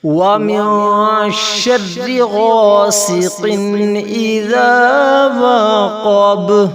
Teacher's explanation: اذا وقب با پر قلقلہ ہے، با کو جھٹکا دے کر پڑھیں گے۔